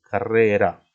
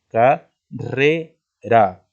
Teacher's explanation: solamente una vocal es tónica. Sería en este caso la E